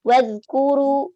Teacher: Nah, ini ada za mati. Jadi za itu bukan huruf qalqalah. Jadi kita hati-hati di za ya. Terkadang suka kepantul gitu ya, memantul, tidak sadar memantul.